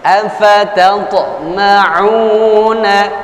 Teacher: Ain pada dhammah dibantu dengan wawu sukun mad asli atau mad tabi'i, 2 harakat.